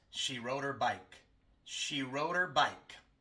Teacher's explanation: normalmente no pronunciamos la H al principio de her